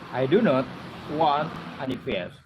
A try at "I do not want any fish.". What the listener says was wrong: Any fish, perjelas. Huruf SH di situ, fish. Bahasa Inggris di ujung-ujungnya harus jelas. Jangan kok dikasih hilang-hilang gitu.